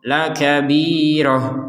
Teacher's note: Tapi karena kita berhenti di sini, maka bukan lagi dibaca kabirotan, tapi dibaca kabiroh, lakabiroh. Huruf ta yang bulat ini dibaca sebagai huruf ha.